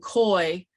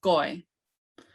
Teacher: You're not saying koi. It's a blend between a K and a G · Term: blended KG sound